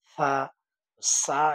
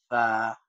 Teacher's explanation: জিহ্বার আগা সামনের ২ দাঁতের আগার সাথে লাগবে। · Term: মাখরাজ